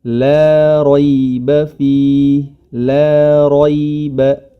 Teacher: la tetap huruf la, jangan le ya, le itu menjadi tebal nantinya. La raiba fi, la raiba, la ro, huruf ro saja yang tebal.